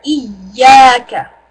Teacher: Make sure you really have that stress on the ya there.